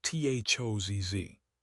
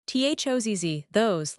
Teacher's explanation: Those plural has the round O diphthong OU and guess what? It ends in a Z again.